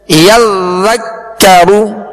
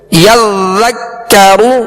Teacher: ذال کو یزک کا نہیں پڑھیں گے بلکہ یذکرو، کاف کو بھی باریک پڑھیں گے، را پر پیش ہے تو را کو پر پڑھیں گے۔